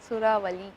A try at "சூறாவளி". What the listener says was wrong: அழுத்தமா சொல்லணும் லாவ. திரும்ப சொல்லுங்க.